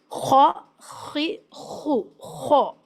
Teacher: इसमें एक स्नरिंग साउंड भी होती है · یہ اپر تھراٹ سے، حلق کے اوپری حصے سے جو منہ کی طرف والا ہے وہاں سے ادا ہوتا ہے، اور اس میں ایک اسنورنگ ساؤنڈ بھی ہوتی ہے۔ خا خی خو خو، اگر آپ کوئی اس کو خا پڑھے تو یہ لائٹ ہو جائے گا، اور ایسا پڑھنا مناسب نہیں، اس کو خا خی خو موٹی آواز کے ساتھ، بولڈ ساؤنڈ کے ساتھ میں پڑھنا ہے۔